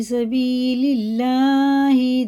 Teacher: دیکھیں اللہ کا لام زیر سے تو باریک پڑھیں گے